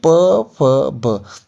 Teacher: आपके जो लिप्स है ना, पहले पूरी तरह से चिपक जाएंगे, मतलब आपको पूरे लिप्स बंद करने पड़ेंगे। ठीक है, बिना लिप्स बंद किए आप इसका उच्चारण नहीं कर सकते। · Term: पवर्ग